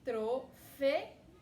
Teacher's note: O E e o O, que são duas fortes, que se separam também. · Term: hiato